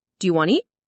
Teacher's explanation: Sometimes letters are dropped, like the T in want to.